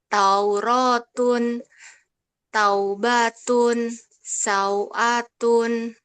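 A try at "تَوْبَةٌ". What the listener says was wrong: Nah, baknya tidak dipanjangkan, Bun. Jadi taubatun, taubatun, satu ketukan.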